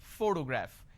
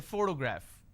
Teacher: the correct pronunciation is photograph which means I am stressing on this particular syllable which is a first syllable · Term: word stress